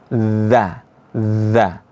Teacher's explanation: Huruf dza ini keluar dari ujung lidah bertemu dengan ujung gigi seri atas.